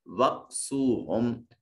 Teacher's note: وقسوہم، واو ساکن ما قبل مضموم ہے، واو مدہ ہوگا. ہم میں میم ساکن اور اس کے بعد نہ با ہے نہ میم ہے، لہذا اس میم کو بھی ظاہر کر کے پڑھیں گے اور قانون کا نام ہوگا اظہار شفوی.